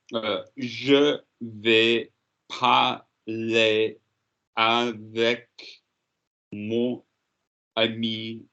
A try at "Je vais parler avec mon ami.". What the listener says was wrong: The ami is 2 syllables. Don't be lazy.